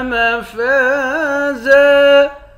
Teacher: فا کے بعد الف ہے، الف حرف مدہ ہے، ایک الف کے مقدار کھینچ کر پڑھیں گے۔ آخر میں دو زبر کی تنوین ہے، دو زبر کی تنوین میں جب وقف کرتے ہیں ایک زبر پڑھا جاتا ہے۔